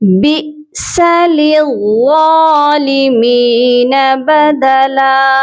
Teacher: ہم نے با کو حمزہ کے ساتھ جھٹکا دے کر پڑھنا ہے